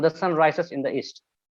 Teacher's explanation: so intonation is a is a contours of speech for example in declarative statements we have a falling tone